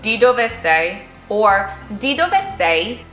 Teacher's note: remember to have that rising intonation at the end of your sentence